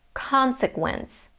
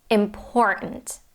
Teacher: all the rest of the syllables have to be reduced, meaning that those other vowels have to be pronounced as a schwa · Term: stress